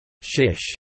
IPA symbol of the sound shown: ʃ